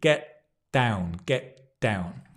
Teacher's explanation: The t and the d is at the front. Your tongue touches the back of your teeth.